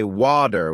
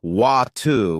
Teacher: In American English, people might say water with a D sound, while in British English, it's often water with a T sound.